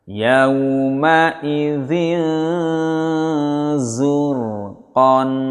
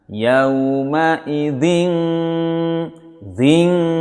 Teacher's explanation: Nah, ini NG-nya pul. Sementara ikhfa NG-nya separuh, ya, atau setengah, kemudian disamarkan kepada huruf zainya